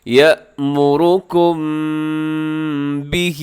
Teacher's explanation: قل بئس ما یأمرکم بہ، یأمرکم میں یا کے بعد حمزہ ہے، اسے جھٹکے سے پڑھے گا، اور یأمرکم میم ساکن کے بعد با، یہاں پہ آپ آواز کو ناک میں لے جائیے گا، اخفا کیجیے گا